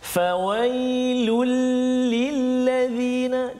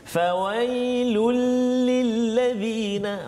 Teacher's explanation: Jadi kena jelaskan bunyi tanwin itu masuk dalam lam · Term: idgham bila gunnah